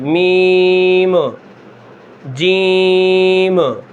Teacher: آخر میں جو جیم کی میم ہے وہ قلقلہ اس کے اوپر نہ ہونے پائے